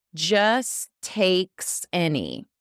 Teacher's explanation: So we have two T's back to back. We just need to use one.